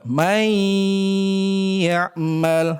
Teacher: kita masukkan yaitu pada huruf setelahnya dilebur nun dan tanwin kepada huruf yang kedua